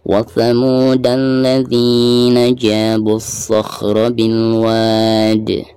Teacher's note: Bil wad, ketika diwakafkan maka di sini dihukumi mad arid disukun ya, karena sebelum huruf terakhir tersebut ada mad tabi'i di sini alif. Cara membacanya harus dipanjangkan, bisa 2, bisa 4 dan bisa 6 harakat. Sekaligus dikolkolahkan karena huruf terakhirnya itu adalah huruf kolkolah yaitu huruf dal.